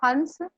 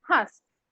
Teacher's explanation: अनुस्वार में क्या होता है, नाक से ज्यादा हवा सांस बाहर को आती है, और अनुनासिक में मुख से बाहर ज्यादा हवा आती है।